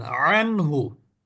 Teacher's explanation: তারপরে দেখেন আনহু নুন সাকিনের পরে হাহলে এখানেও হা থাকার কারণে এই নুন সাকিনটাকে আমরা গুন্না করলাম না স্পষ্ট উচ্চারণ করলাম